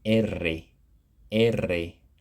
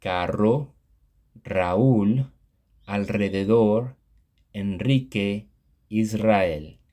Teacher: The double r sound requires that you roll your r, creating a sound that doesn't exist in English. The sound is required when a word has the letter combination double r, for example, carro.